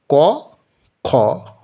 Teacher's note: ক বর্গের ক, খ অর্থাৎ বর্গের প্রথম এবং দ্বিতীয় হলো অঘোষ ধ্বনি